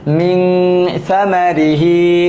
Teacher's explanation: গুন্নার পরিমাণটা কেমন হবে এক আলিফ পরিমাণ